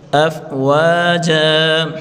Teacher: جیم دو زبر جن آخری حرف پر اگر وقف کریں گے اس کے اوپر دو زبر کی تنوین ہوگی تو وہاں ایک زبر اور ایک الف کر کے پڑھیں گے. افواجن وقفن میں پڑھیں گے افواجا.